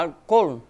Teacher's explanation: o tônico para nós é o al. Já em espanhol é o col, né? Por isso fala álcool. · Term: sílaba tônica